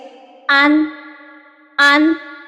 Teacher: اظہار میں ہماری زبان نون کے مخرج پر پراپر ٹچ ہوتی ہے، یعنی ہماری زبان اوپر تالو سے سختی سے چپکتی ہے